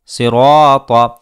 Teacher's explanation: طا زیر سی، را الف زبر را، طا زبر طا، صراطا۔ را کے اوپر زبر ہے جس کی وجہ سے را کو پر کیا جائے گا اور اس کے بعد آنے والے الف کو بھی پر کیا جائے گا، کیونکہ قاعدہ یہ ہے کہ الف سے پہلے اگر کوئی پر اور موٹا ہونے والا حرف ہو تو ہم الف کو بھی پر کرتے ہیں۔